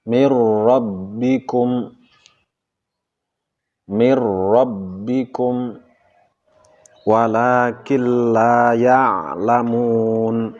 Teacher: Nun mati atau tanwin yang bertemu dengan ro dan lam dilebur menjadi ro atau lam tanpa disertai dengan dengungan. Inilah disebut dengan idgham bila gunnah.